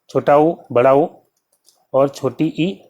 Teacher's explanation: संवृत में जो है मुख लगभग बंद होता है, मुंह लगभग बंद होता है